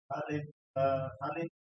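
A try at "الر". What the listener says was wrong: Ro-nya kurangin. Ro 2 saja. Lamnya jangan kurangin. 6. Jangan ditahan. Alif lam ra. Ra.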